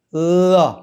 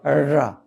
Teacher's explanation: टिप से लगाओगे ल होता है और बोब से लगा उसका र होता है